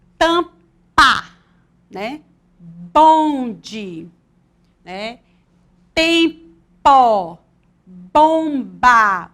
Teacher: Quando usamos as letras MP e MB em sequência e no meio da palavra, produzimos o som bilabial, porque os nossos lábios se juntam quando as pronunciamos. E, nesse caso, elas se chamam consoantes bilabiais.